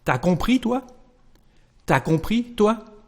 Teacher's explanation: Well, if you remember the previous lesson, we know that there is a contraction here between the subject tu and the verb a, and we are going to say just t'as